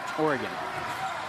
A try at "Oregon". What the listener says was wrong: It's not Aura, it's just Oregon. No, not Aura. Oregon. One word.